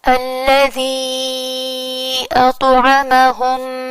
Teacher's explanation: الذی کی اینڈنگ ہو رہی ہے یا حرف مد سے، اور اطعمہم کی شروعات ہو رہی ہے حمزہ سے، تو یہاں بن رہا ہے مد جائز منفصل کا فارمولا، جس کی وجہ سے ہم اس یا کی آواز کو 4 کاؤنٹس یا 5 کاؤنٹس لمبا کھینچتے ہیں